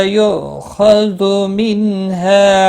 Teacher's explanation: یو حمزہ ساکن کو تھوڑا جھٹکے کے ساتھ ادا کریں۔ خ حروف مستعلیہ میں سے پر پڑا جائے گا، زو نہیں ہے، خذو من ہے۔